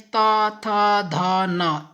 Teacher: जो वर्ण हम दांतों की सहायता से बोलते हैं उन्हें क्या है, दातव्य कहते हैं